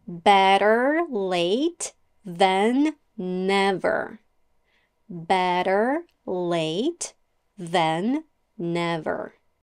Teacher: a fast D sound also known as a flap t or d